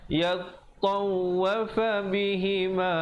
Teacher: ta dengan waw bersabdu, jadi tekankan di atas kedua-duanya